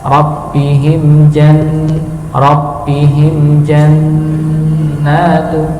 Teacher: mim sukun bertemu dengan jim, maka diidharkan, dijelaskan